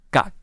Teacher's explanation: you can feel a tongue pushing up at the back